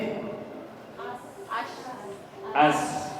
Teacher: Samar, terbuka, tidak bergetar, sama nafas mengalir. Ya. Bergetarnya tidak, harus tidak bergetar ya Bu ya.